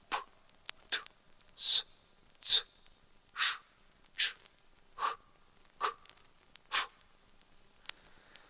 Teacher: глухі приголосні творяться тільки з участю шуму